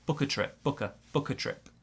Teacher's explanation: Small stress on book, big stress on trip, and we got a linking there.